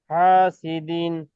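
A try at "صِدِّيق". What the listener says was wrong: এই মাঝখানেরটা আপনার একটু টান হয়ে গেছে, আবার বলেন তো।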